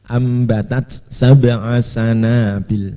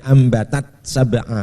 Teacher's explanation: Tidak idgham, harus hamesnya tetap kelihatan